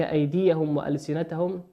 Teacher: وكذلك أيديهم وألسنتهم ميم ساكنة أتى بعدها حرف الواو، والواو من حروف الإظهار